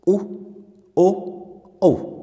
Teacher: इन चारों की स्थिति के अंदर हमारे होठ है वो क्या हो रहे हैं मित्रों, गोल हो रहे हैं, इसलिए इसे वृत्ताकार स्वर कहेंगे।